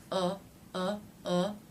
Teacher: the tip of the tongue has pulled back a little bit it's not touching anything uh uh the tongue is raised somewhat towards the midddle uh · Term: dark l